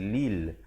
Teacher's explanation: Lam baris bawah kembali kepada asas. Lam baris kasrah bunyi li bukan bunyi le. Jadi bila bertemu lam jadi lil.